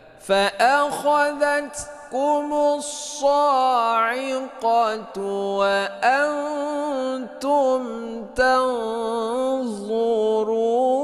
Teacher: nun mati bertemu dengan ta, hukumnya adalah ikhfa hakiki, dibaca samar berdengung 2 harokat · Mim mati bertemu dengan ta, ini idhar syafawi, tidak berdengung, ya. Jangan kita dengungkan mim mati ini.